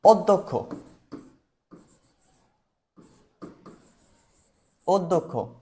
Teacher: আমাদের ক প্লাস খ উচ্চারণ হবে